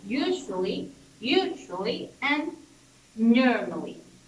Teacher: this stress is gonna be in the first syllable